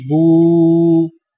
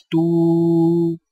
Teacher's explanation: الٹی پیش ہونٹوں کو گول کر کے تھوڑا سا کھینچ کر پڑھا جاتا ہے